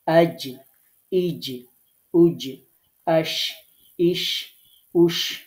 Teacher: জিহ্বার ঠিক মধ্যখান তার বরাবর উপরে তালুর সাথে লাগিয়ে আমরা উচ্চারণ করেছি জিম, শিন এবং ইয়া।